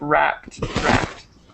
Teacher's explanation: you do pronounce the d at the end it's kind of hard to hear sometimes